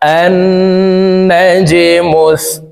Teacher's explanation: জিম কলকলার হরফ নিচের দিকে ধাবিত করে ধাক্কা দিয়ে উচ্চারণ করব।